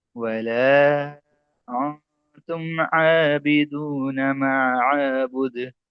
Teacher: हुरूफ इख्फा ता है, नून साकिन के बाद ता आया है, इस वजह से यहाँ गुन्ना होगा।